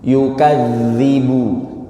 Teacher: Huruf zal ini makrotnya tengah lidah, ujung lidah menempel ke gigi seri bagian atas. Ya, ke bagian atas di sini.